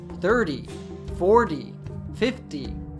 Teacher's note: We say it with an American T, 30, 40, 50, etc. But we say the teens with a true T sound.